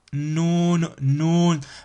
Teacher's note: mais on n'a pas cet effet roulé nous nous nous et vous sentez légèrement que la langue vient toucher un peu les dents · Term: Noun